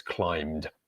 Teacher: So we're ending it ed. The ed spelling is pronounced d because the end of climb, we have the voiced consonant m. So it's climbed, but we're not pronouncing the B in there.